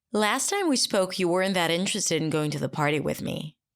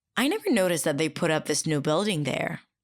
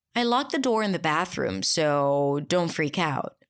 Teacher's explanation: when people start a new idea, there's always what I call that wavy intonation, where they start really high in pitch